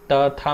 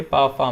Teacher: अघोष व्यंजन किसमें किसमें होता है, एक और दो, जिसमें तंत्र कंपित नहीं होती है